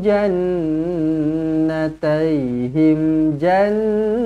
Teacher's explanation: Nun sabdu wajibul gunah dengungkan dua harakat